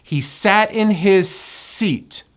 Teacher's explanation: it becomes a connected S. He sat in his seat. His seat. Connect the 2 S's.